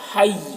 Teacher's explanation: یعنی یا کی آواز ظاہر ہوگی اور تشدید ہے تو یہ ایک جھٹکے کے ساتھ آواز آئے گی